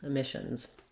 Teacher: letter S says the Z sound, because when a word ends with a voice consonant like n, when you make it plural, you put the Z on.